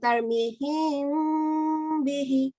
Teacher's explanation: After meme sakina, it has a letter ba, and we do light gunna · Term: Ikhfa Shafawi